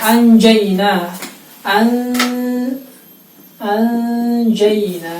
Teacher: Yang dibaca samar adalah nun sukun atau tanwinnya sambil menyiapkan huruf setelahnya yang akan dibaca, kemudian ditahan bacanya 2 harokat. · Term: ikhfa